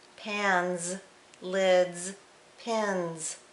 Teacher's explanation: suffix S can be unvoiced as in tips, S, or it can be voiced as in pins, Z. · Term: voiced sound Z